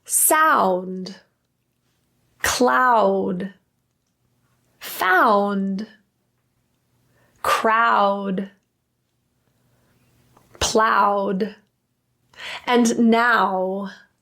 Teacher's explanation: The lips are transitioning from an open to closed position, and our tongue is transitioning from a low to high position. And that's happening all at once.